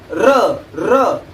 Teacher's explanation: र र करताना आपली जीभ जी आहे ती कंपित होते. कंपित म्हणजेच कंपन, जसं की आपण त्याला इंग्लिश मध्ये म्हणतो व्हायब्रेशन. · आपल्याला टाळूला जीभ लागते वरती, टाळूच्या पाठीमागे म्हणजे मूर्धा जो भाग आहे त्या ठिकाणी, परंतु र र करताना आपली जीभ जी आहे ती कंपित होते. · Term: कंपित वर्ण